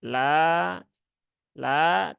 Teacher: nah kemudian lanya lamnya di sini ada Alif setelah fathah maka lamnya dibaca panjang dua harakat